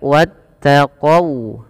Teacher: jangan dibaca wattaqau dengan o, tapi dia dengan u ya, karena dia sifat waw.